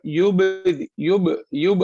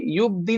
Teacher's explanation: ये बा पर भी कलकला होगा, ठीक है ना, बाउंस होगा। युब, युब, युब, हम इसे युब दी नहीं कहेंगे, युब, युब।